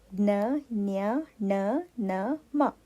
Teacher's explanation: ಅನುನಾಸಿಕ ಅಂದರೆ ಮೂಗಿನ ಸಹಾಯದಿಂದ ಉಚ್ಚರಿಸಲ್ಪಡುವಂಥ ಅಕ್ಷರಗಳು